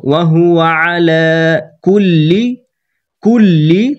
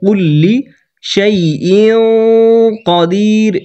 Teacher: তাহলে ওয়াহুয়া তাড়াতাড়ি পড়বো, আয়ে তাড়াতাড়ি পড়ে লামে টান দিব। ওয়াহুয়া আলা কুল্লি তাসদিদে ধাক্কা দিয়ে লি পড়বো